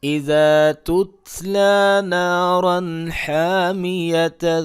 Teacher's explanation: یہاں پہ اخفا میں نے اس لیے نہیں کیا کیونکہ تنوین کے بعد والا حرف حروف حلقی میں سے ہے